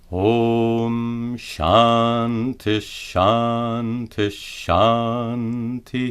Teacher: note that the visarga is pronounced as shot to match the following letter